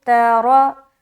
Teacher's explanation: آگے ترا، تا زبر تا، را زبر را۔ را یہاں پر موٹا ادا ہوگا کیونکہ را کے اوپر زبر آ گیا۔ جب بھی را کے اوپر زبر یا پیش آ جائے تو را کو موٹا ادا کرنا ہے۔